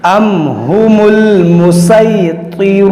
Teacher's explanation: यहाँ पर इजहार शफवी है, यानी यहाँ पर गुन्ना नहीं होगा, मीम साकिन का कायदा है। अम हुमुल मुसैतिरूना, और यहाँ पर देखिए त्वा को मोटा करेंगे ती, और यहाँ पर देखिए वाव मद्दा है, वाव साकिन से पहले पेश है, ये वाव मद्दा है, इसको खींचेंगे तीरूना, अम हुमुल मुसैतिरूना।